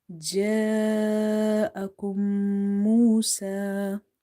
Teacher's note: You see that this alif is madda because before alif you have fatha, okay, and as well as there is mad on top. So if you see after madda letter hamza in the same word. This is one word. Okay, then you have to stretch it up to 2.5 alif, and this rule is called madde muttasil, the attached mad.